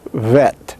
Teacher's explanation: you're pronouncing it as a fricative so it is bilabial fricative and voiced when spoken it sounds like vet like v a vet but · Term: B fricative